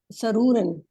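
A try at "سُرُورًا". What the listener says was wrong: तो सीन पे पेश है ना, तो सुरूरा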